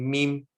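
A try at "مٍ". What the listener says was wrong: Min. Min. Okay, with the N at the end. Min.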